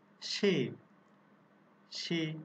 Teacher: সে দন্ত স এর সঙ্গে যে এ ধ্বনিটি আছে তার উচ্চারণ কিন্তু এই সংবৃত হচ্ছে